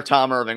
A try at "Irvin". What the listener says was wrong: It's not Irving. It's just Irvin. 5 letters, not a G in sight.